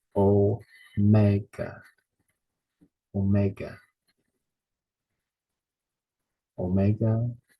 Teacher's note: stresses on the second syllable